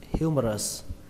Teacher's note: Trọng âm của từ này rơi vào âm đầu tiên, âm hiu. Âm hưu trong từ điều hưu trong tiếng Việt, bạn lấy âm hưu đó ra.